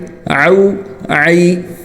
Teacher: عین حلق سے نکلے گا، یہ الف حمزہ کی طرح نہیں ہونا چاہیے بلکہ اس کو حلق سے نکالنا ہے، اس کو او نہیں پڑھنا او بلکہ حلق سے او۔